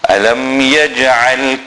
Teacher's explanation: Again the Ain. Remember, center of the throat.